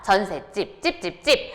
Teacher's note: 뒷말에 예사소리가 된소리로 발음이 되죠. 전세 플러스 집이니까 어떻습니까?